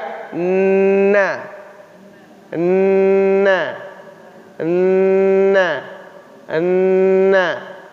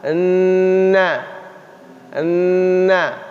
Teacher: Ujung lidah kita dengan gusi gigi sebelah atas.